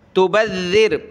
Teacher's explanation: ذال کو سخت تو کرنا ہے لیکن زبان نکالتے ہوئے اس کا تلفظ ادا ہوگا